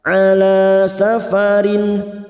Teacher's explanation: Kasrot tanwin dibaca jelas tanpa mendengung. Nun sukun atau tanwin yang bertemu dengan 6 huruf ini, hamzah, ha, ha, kha, ain, ghain, maka nun sukun atau tanwin dibaca jelas tanpa mendengung. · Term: idhar halki